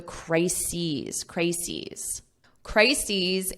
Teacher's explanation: And notice the pronunciation, because we have crisis is crises E So you have that long E on the plural